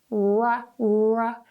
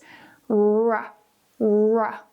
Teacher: when you do the English ra, ra, ra, notice I'm making like a duck face or a kissing face